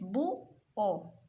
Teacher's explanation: se separan las vocales y se forman dos sílabas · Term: hiato